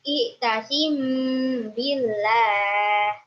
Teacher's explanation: Alasannya karena mim sukun bertemu dengan ba, cara membacanya dengan 3 harokat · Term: Iqfa syafawi